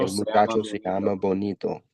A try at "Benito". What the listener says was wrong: Benito. Bonito with an O means handsome.